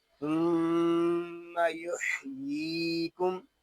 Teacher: ثم یحییکم، میم شدد میں غنہ ہوگا، یا کو ایک الف تک کھینچ کر پڑھیں گے کیونکہ یہاں یا مدہ ہو رہا ہے